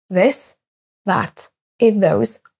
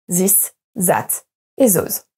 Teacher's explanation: Le premier son TH qui va apparaître dans les mots this, that, those, par exemple, les Français vont avoir tendance à le remplacer par le son qui ressemble le plus en français, c'est-à-dire le son Z.